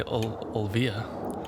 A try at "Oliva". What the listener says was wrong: not Olvia because the I is before the V. Oliva.